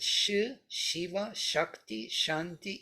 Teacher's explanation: in Sanskrit Shiva Shakti Shanti is a palatal